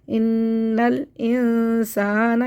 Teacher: इन्नल इंसाना, बारीक करना है, सौ नहीं करना है, सा पढ़ना है। इन्नल इंसाना, हमज़ा तल वसल मिलाने की सूरत में गिर जाएगा, इसको नहीं पढ़ेंगे, नून को फ़ौरन साकिन से मिला देंगे।